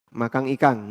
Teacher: Makassar kelemahannya di mana? Nah, N jadi ang.